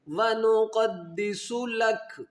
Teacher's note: दाल के ऊपर भी शद है तो इसको दो मरतबा पढ़ेंगे । व नुक़द्दिसु लक, लाम को काफ के साथ मिलाएंगे इसलिए